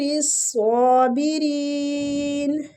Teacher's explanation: سواد کو پور پڑھیں گے اور کھینچیں گے بھی · شین باریک سیٹی کے ساتھ ، را بھی ادھر باریک پڑھا جائے گا، سواد مستعلیہ ہے،